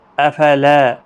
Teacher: لا الف مدہ ہے، ایک الف کی مقدار کے برابر کھینچیں گے